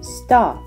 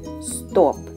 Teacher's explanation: First, with the final consonant unreleased, then with the consonant released.